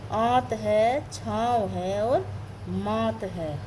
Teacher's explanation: जबकि अनुनासिक के बारे में अगर आपको बताया जाए कि उच्चारण में नाक से कम सांस निकलती है और मुंह से अधिक निकलती है